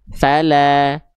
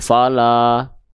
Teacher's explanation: Jadi dasarnya kalau ada huruf hijaiyah apapun berbaris atas macam ni namanya fathah dibaca dengan vokal a. Maka kalau keluarnya dengan vokal a tandanya dia termasuk ke dalam huruf yang tipis. Maka lamnya dibaca tipis.